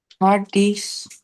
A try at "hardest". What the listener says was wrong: let's say hardest, not hardies, because this one is not letter I, it's letter E. That will be hardest.